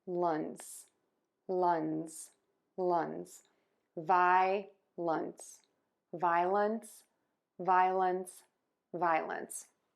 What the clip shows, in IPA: ˈvaɪələns or ˈvaɪləns